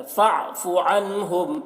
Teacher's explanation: نون میں اظہار ہو رہا ہے، میم میں اظہار شفوی ہو رہا ہے۔